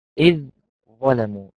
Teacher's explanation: إذ الأولاني مرقق بعده حرف الظاء المفخم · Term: إدغام